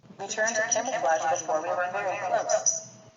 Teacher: b가 이제 양순음이지만 대기음 또는 기식음이 없기 때문에 G에 가깝게 아마 들릴 겁니다